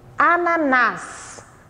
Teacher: sílaba mais forte é o nas, ela é a última, se chama oxítona. Terminou em a ou as, plural, eu acentuo.